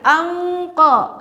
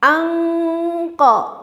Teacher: Dan nun dengan qaf makhrajnya itu agak berjauhan. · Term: ifa ab'ad